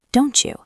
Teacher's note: T + Y equals ch,